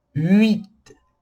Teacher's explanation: ele também tem um som muito fechado de U, mas a gente junta com a próxima letra.